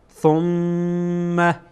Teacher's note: ثم میم مشدده غنه میشه. ثم یعنی صدا از بینی خارج میشه